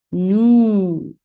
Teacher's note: जब वाव साकिन की साउंड होती है और उसकी साउंड होती है ऊ, और दम्मा की साउंड भी होती है ऊ। तो जब ये दोनों एक सी आवाजें इकट्ठी आती हैं तो लॉन्ग वोवल बन जाता है। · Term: वाव मद्दा